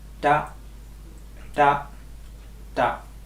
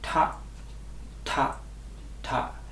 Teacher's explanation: When you say the first alphabet, there no air comes out, and the second alphabet, a slight air comes out.